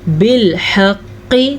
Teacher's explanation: قاف موٹا ہے تو قاف کو موٹا ہی پڑھیے گا، باریک قاف نہیں پڑھنا